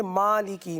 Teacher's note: میم پر کھڑا زبر جسے 1 الف تک کھینچنا ہے، مالکی، صحیح ہے۔